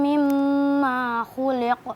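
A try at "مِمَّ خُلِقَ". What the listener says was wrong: Nah, ini perlu diperhatikan bahwa falyanzuril insanu mimma khuliq. Ma-nya nggak panjang.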